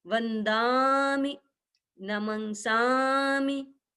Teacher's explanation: छोटा होता है पीछे तो नमंसामी ऐसे नहीं बोलेंगे, वंदामी ऐसे नहीं बोलेंगे, वंदामी। थोड़ा सा दा को लंबा करने से और मी को थोड़ा जल्दी छोड़ने से उच्चारण शुद्ध हो जाता है